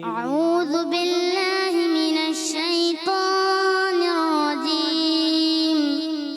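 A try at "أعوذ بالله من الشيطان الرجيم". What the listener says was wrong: اچھا تھوڑا ناک سے نکالنا ہے، ناک میں زیادہ نہیں لے کے جانا، کوشش کرنا، ٹھیک ہے؟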